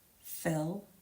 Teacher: the I sound is made in the center of the mouth with the tongue in a relaxed or neutral position